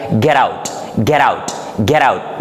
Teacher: we pronounce not t and not d, but it becomes between t and d